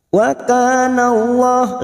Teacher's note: lam jalalah yang sebelumnya fathah kita baca tafkim.